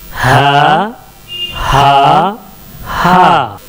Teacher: तो हमजा और हा आखिर हलक से निकलेगा, हलक के एंड से